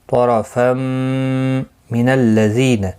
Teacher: طا حروف مستعلیہ میں سے ہے اس لیے پر پڑا جائے گا، را زبر کی وجہ سے پر پڑا جائے گا. تنوین کے بعد یارملون کا میم آیا ہے، ادغام مع الغنہ ہوگا، گنہ کے ساتھ پڑھیں گے. طرفا من الذین، زی یا مدہ ہے، ایک الف کی مقدار کے برابر کھینچ کر پڑھیں گے، نہ کو کھینچنا نہیں.